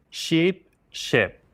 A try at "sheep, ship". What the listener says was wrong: Something about the E. I want you to really roll your tongue forward. It's high up, but it needs a little more push towards the front because then you'll reduce it when speaking.